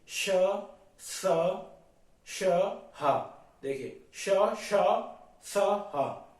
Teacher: ये आपके महाप्राण है क्योंकि ये आपको पता है इसमें बहुत हवा निकलती है हा आपका सघोष है और श श स आपके अघोष है